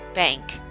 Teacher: The A, today we do have a word in our vocabulary list, bank, that has that short A sound, bank. And it also has the N that makes the NG sound